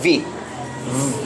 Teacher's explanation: there is a sudden stop but not a total stop of the air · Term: fricatives